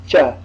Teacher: palatals again the hard palatal is first and it is cha like our ch cha but without a ha sound just with the teeth the tongue is cupping the upper palate